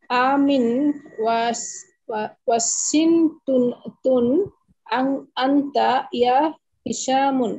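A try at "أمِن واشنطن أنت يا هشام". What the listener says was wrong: না, আমিন একটা শব্দ, আমিন ওয়াশিংটুনা, ওয়াশিংটুনা, ঠিক আছে, এটা একটা শব্দ।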